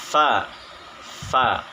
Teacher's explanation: penyebutan huruf fa yaitu berdesis lepas atau hamas, kemudian lunak dan suaranya tidak tertahan, lidah di bawah atau istifal, dan terbuka antara lidah dan langit-langit bagian atas, dan keluarnya lancar atau tidak tertahan atau juga disebut ringan.